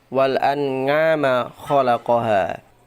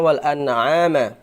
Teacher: Kemudian ain wal an'ama khalaqoha. Kalau kurang fasih baca ain, bisa saja ainnya berubah menjadi nga.